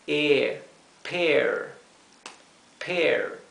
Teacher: se pronunciaría como si fuera una doble E en español, o una E larga.